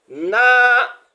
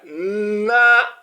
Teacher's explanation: Il faudrait qu'on ait l'impression que le na est deux fois, le n est deux fois au cours de la lecture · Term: tchadda